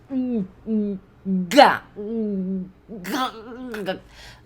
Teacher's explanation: a gente não joga pro nariz, a gente só para o ar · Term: som do G